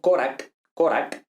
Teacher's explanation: la K es una consonante oclusiva velar